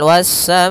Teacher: Kemudian hamzah tersebut pada satu kata sehingga dinamakan muttasil, bersambung. Panjang untuk mad wajib muttasil yaitu 4 harokat atau 5 harokat dalam sebuah riwayat.